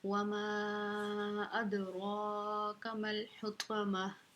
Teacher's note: میم کو ڈائریکٹ ہم نے لام کے ساتھ ملا دینا ہے، ہا باریک ہے، طا موٹے حرفوں میں سے ہے، اور گول تا کو ہا ساکن بنا کے ہم وقف کر دیں گے، ٹھیک ہے۔